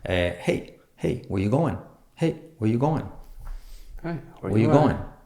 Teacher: lo que sueles acentuar es o verbos o nombres o la palabra que tú consideres más importante. En este caso sería going. Entonces, el punto alto, el pitch, sería hey, where you going?